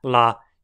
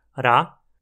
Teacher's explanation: para notar que a forma como são produzidos é muito parecida a maior diferença é que um lá costuma ter uma duração um pouco maior e a língua deixa uma abertura entre ela e